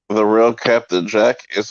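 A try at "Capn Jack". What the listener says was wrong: no, you mispronounced it. It's the real Captain, not Captain, Captain Jack, CAPN, Captain.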